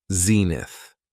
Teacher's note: It has 2 syllables, and the stress is on the first syllable, zenith.